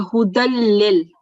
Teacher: the next letter after the tanween is lam, which is a idgham letter without the gunna sound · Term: idgham without the gunna